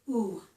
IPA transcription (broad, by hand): u